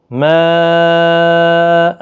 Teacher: مد متصل ہے، 4 الف کی مقدار کے برابر کھینچ کر پڑھیں